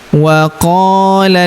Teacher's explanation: huruf qo kita panjangkan dua harakat karena terdapat alif di depannya